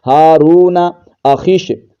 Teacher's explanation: خا کو شین کے ساتھ ملا دیتے ہیں